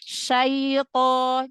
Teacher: Jangan masuk ke hidung huruf linnya.